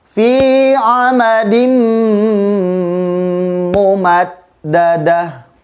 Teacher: Di ayat terakhir juga ada huruf yang harus ditahan bacaannya, yaitu tanwin bertemu dengan huruf mim, hukumnya adalah idgham bigunnah.